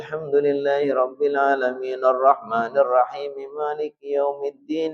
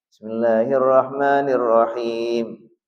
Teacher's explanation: Dari Ummu Salamah, Rasulullah SAW diriwayatkan bahwa baginda yuqatti'u qira'atahu ayatan. Ketika membaca Al-Quran, beliau membacanya diputus satu ayat. Jadi enggak disambung.